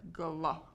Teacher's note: makes a brand new sound, but you can still hear the g and the l individually